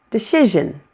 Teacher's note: Decision has two weak syllables, the first one and the last.